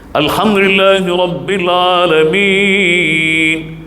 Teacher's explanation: 4 harakat, sukunkan nun